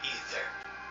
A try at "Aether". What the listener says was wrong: Aether. It's Aether. You remove the A and it's Ether.